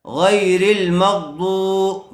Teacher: واو ساکن آیا ہوا ہے اس لیے واو مدہ ہوگا تھوڑا کھینچ کر پڑھیں گے